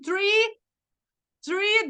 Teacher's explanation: a gente coloca a língua entre os dentes né pontinha da língua entre os dentes